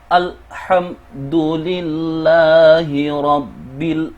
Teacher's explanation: Ketika al bertemu dengan huruf Qamariyah ha, al harus dibaca dengan jelas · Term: Al-Qamariyah